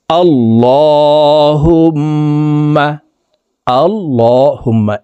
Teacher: এই লামকে ল অর্থাৎ মোটা করে পড়তে হবে কারণ আল্লাহ শব্দের আগের হরফে জবর অথবা পেশ হইলে এই লামকে